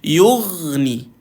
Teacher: Matikan ghain tuan-tuan, sukunkan ghain. Dia ada satu sifat yang kita panggil sifat rakhawah. Ghain ni huruf rakhawah. Tuan-tuan perlu jalankan bunyi dia tuan-tuan. Jalankan bunyi dia bila dimatikan.